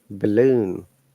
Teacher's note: at the beginning of this word like balloon is a schwa sound